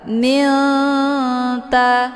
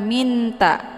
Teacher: nunnya disamarkan, kemudian siap-siap mau baca huruf ta. Milta, ya, jadi bukan minta, jelas bunyi n-nya, itu bacaan yang salah, tapi disamarkan dulu nunnya, kemudian baru masuk ke huruf ta. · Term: ikhfa aqrab